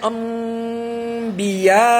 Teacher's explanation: اور ایک جو حرف ہے وہ با ہے جیسے انبیاء وہ نون ہے مگر با آ گیا تو نون کا میم بن جاتا ہے